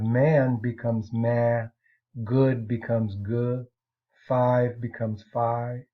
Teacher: features involving final consonants. For example, final consonants are sometimes dropped